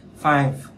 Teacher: Five âm v đấy, nó chỉ gió thôi